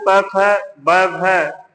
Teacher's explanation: ये ओष्ठ उच्चारण स्थान वाले हैं